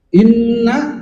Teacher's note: Nun musyaddadah, mim musyaddadah hukumnya tajibul ghunah. Yaitu ghunah dengung. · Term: ghunah musyaddadah